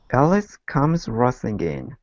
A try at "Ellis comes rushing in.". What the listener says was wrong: Okay, give me a good SH instead of rushing, rushing. Ellis comes rushing in.